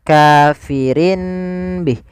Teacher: iqlab itu mengganti suara Nun menjadi suara mim